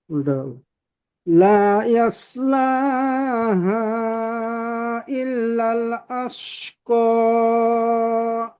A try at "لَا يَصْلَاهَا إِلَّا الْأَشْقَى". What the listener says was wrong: জি মাশাআল্লাহ, শিনের উচ্চারণটা সুন্দর হয়েছে। সদের উচ্চারণটা আরেকটু মোটা হলে আরেকটু সুন্দর হবে। লা ইয়াস লাহা ইল্লাল আশকা।